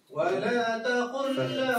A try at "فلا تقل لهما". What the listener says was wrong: فلا فلا بالفاء فلا